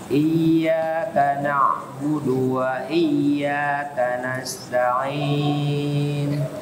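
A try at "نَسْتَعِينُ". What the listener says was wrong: Tanbih juga sa itu harus agak lama kan. Nas jangan cepat ya. Nas tahan dikit. Nasta'in gitu.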